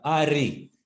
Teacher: touch कहीं पे नहीं कर रही, लेकिन वो ट्रिल करती है, आगे से वाइब्रेट करती है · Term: रोटिक साउंड